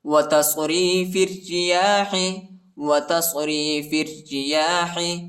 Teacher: را کو نرم پڑھیں گے، ٹھیک ہے، باریک پڑھیں گے